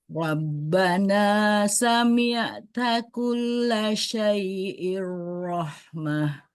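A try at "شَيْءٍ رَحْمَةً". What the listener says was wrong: Hati-hati pas baca syai'i, i-nya jangan tebal. Syai'ir rahmah.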